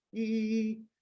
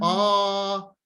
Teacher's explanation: when you're saying E, your tongue is up and front, like E. And when you're saying ah, your tongue is down and back.